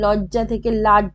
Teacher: অন্তব্যঞ্জন লোপ হয়েছে লজ্জা থেকে লাজ